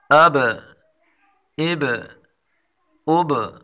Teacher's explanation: حمزہ، با، زبر، اب، با کو تھوڑا ہلا کر پڑھیں گے، یعنی قلقلہ کے ساتھ پڑھیں گے